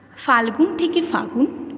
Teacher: এখানে ফাল্গুন শব্দে মধ্যবর্তী ল ফাগুন শব্দে আর থাকছে না, তাই এটি মধ্য ব্যঞ্জন লোপের উদাহরণ